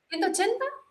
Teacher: con una entonación me decían la cifra en pesos cantando hacia arriba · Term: entonación así como ascendente